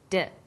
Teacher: When you articulate d, you can feel your tongue against your tooth ridge, like this, d.